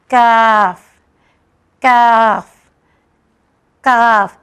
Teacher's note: ये कॉफ से ज़रा हट के है लेटर। इसमें हमारी ज़बान का जो आखिरी हिस्सा है वो तालू से टच होती है बट आवाज़ पतली हो जाती है।